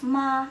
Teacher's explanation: And the mark above the vowel or above the initial, it is a tone. In here, it is a first tone or a level tone.